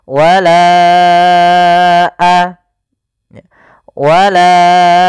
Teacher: bukan pada lafalanya maka kita namakan dengan Mad Jaiz munfasil maka kita panjangkan huruf laanya sepanjang empat harakat atau lima harakat · Wala baru baca a. Panjangkan la-nya dulu 4 harokat baru lepas.